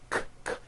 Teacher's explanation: Q sounds are made with the K sound, k, k, and the W sound, w, put together.